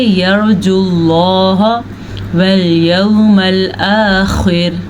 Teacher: آخر خا کو پر پڑھنا ہے، را کو باریک پڑھنا ہے